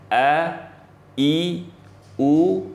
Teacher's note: Pangkal tenggorokan ini ada 2 huruf, yaitu hamzah atau sering kita sebut a. Jadi kalau kita baca a, i, u, nah itu keluarnya itu dari pangkal tenggorokan